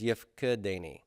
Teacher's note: Open pretonic reduces to vocal shava.